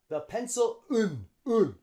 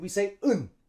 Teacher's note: And instead of and, we say un. And we drop the D